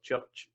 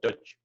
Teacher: the voice isn't on for church and the voice is on for judge. So that's the difference between them.